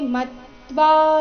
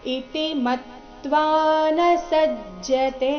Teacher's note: ಮ ಮೇಲೆ ಆಘಾತ ಬರಬೇಕು, ಮುಂದೆ ತ್ವಾ ಸಂಯುಕ್ತಾಕ್ಷರ ಬಂದ ಕಾರಣ